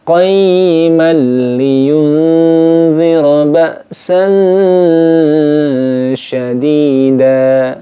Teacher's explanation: Kurang tepat karena di sini ada tanda saktah, ya. Tanda saktah ini cara membacanya adalah dengan berhenti sejenak sekedar satu alif, kemudian dilanjutkan.